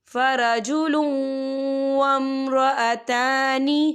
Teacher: یا دیکھیں فرجلون، لام کے اوپر تنوین ہے اور تنوین کے بعد جو ہے واو آ رہا ہے، اور واو جو ہے حروف یرملون میں سے ہے، تو یہاں پر ادغام ہوگا اور ہم اسے تھوڑا سا غننے کے ساتھ پڑھیں گے